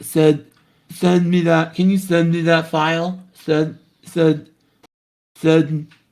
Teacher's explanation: I'm getting kind of like a stuck or trapped nasality to the sound